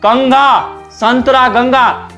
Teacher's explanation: तो अनुस्वार का उच्चारण के लिए नाक जरूरी होता है, क्योंकि ज्यादा हवा कहां से निकलता है, नाक से निकलता है। तो आने वाली हवा नाक के रास्ते बाहर निकलती है।